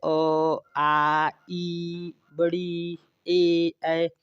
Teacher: अवृत्ताकार मतलब जिन स्वरों के उच्चारण के समय जो हमारे होठ है वो गोल न होकर ऊपर नीचे इधर उधर फैल जाते हैं, तो उनको हम कहते हैं अवृत्ताकार स्वर।